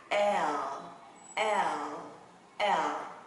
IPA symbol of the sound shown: el